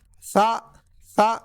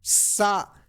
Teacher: This is sa sa without whistle but this is s with whistle